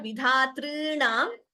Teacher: vidhatrinam, dha is mahaprana